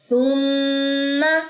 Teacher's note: میم مشدد کا غنہ کرنے کے بعد آپ نے زبر کو لمبا نہیں کرنا